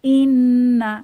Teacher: নুন সাকিনের পরে নুন এসেছে, তাহলে ইদগাম উইদ গুন্নাহ, গুন্নাহ সহ মিলিয়ে পড়ব